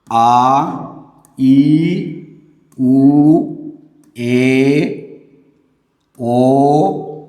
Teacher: ಎರಡು ಮಾತ್ರಾ ಕಾಲದಲ್ಲಿ ಉಚ್ಚರಿಸಲ್ಪಡುವ ವರ್ಣ ಅಥವಾ ಅಕ್ಷರಗಳನ್ನ ದೀರ್ಘ ಸ್ವರಗಳು ಅಂತ ಹೇಳಿ ಕರೀತೀವಿ ಆ ಈ ಊ ಏ ಓ ಇತ್ಯಾದಿ ಅಂದ್ರೆ ಈ ಅಕ್ಷರಗಳನ್ನ ಉಚ್ಚಾರ ಮಾಡುವಾಗ